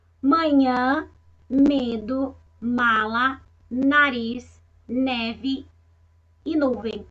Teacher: ao falar uma palavra com as letras m e m e o ar sai pelo nariz provocando uma vibração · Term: som nasal